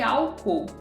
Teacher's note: tipo a antepenúltima sílaba será acentuada rápido da mesma forma então a antepenúltima sílaba é a tônica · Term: proparoxítonas